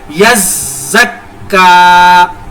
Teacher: یا زک کا نہیں پڑھنا، کیونکہ یا کو ہم نے پہلے سختی کے ساتھ زا کے ساتھ ملانا ہے، زا کو پھر کاف کے ساتھ ملانا ہے، کیونکہ زا اور کاف دونوں کے اوپر شد ہے، اور جن کے اوپر شد آ جائے ان کے ساتھ سختی کے ساتھ ملایا جاتا ہے۔ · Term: ڈبل شد